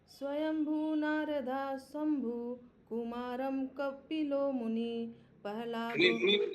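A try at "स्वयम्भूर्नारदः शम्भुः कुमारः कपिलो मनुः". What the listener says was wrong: मनु, मुनि नहीं है।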